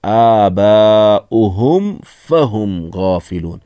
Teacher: ہم فہم یہاں میم ساکن کے بعد فا آیا ہے، یہاں پر اظہار شفوی ہوگا، یعنی یہاں آپ غنہ نہیں کر سکتے ہیں، ناک سے نہیں پڑھیں گے